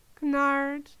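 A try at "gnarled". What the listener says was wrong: Nod. You don't pronounce the G.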